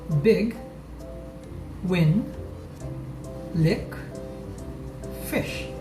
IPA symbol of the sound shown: ɪ